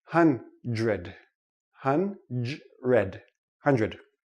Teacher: It's too difficult for the tongue to make the quick switch. So this sounds like JR.